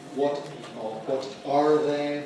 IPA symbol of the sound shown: ɑːr